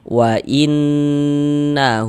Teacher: Karena dia ini gunnah, maka cara membacanya itu kita gunnahkan. Jadi di bagian innya itu suaranya itu kita tahan, kita panjangkan sejenak ya, sepanjang 2 harokat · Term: gunnah musyaddadah